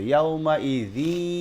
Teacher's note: ইদগামে বাগুন্না করে পড়তে হবে, মিলে গুন্না সহিত পড়তে হবে